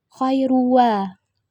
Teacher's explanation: Hukumnya idgham bigunnah, karena huruf ra berharakat dhammah tanwin bertemu huruf waw, dibaca masuk dengan dengung dan ditahan sampai 3 harakat